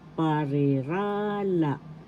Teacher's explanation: So you say this parirala. The accent is in the third syllable